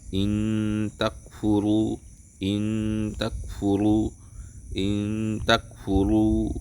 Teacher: Maka ketika nun ketemu ta itu nunnya seperti disamarkan. Bacanya ikhfa ini disamarkan.